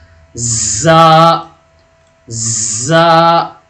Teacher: تھوڑی سی زبان میں رگڑن پیدا ہوگی اور ہوا بھی آئے گی، لیکن کم ہوا ہوگی۔ سین اور صاد کے مقابلے میں اس میں ہوا جو ہے وہ کم آئے گی، تو اس کو کیسے بولیں گے، لیکن زبان میں رگڑن پیدا ہوگی، اور اس کی ساؤنڈ کس طرح آئے گی، تو اس طرح آئے گی، زا، زا۔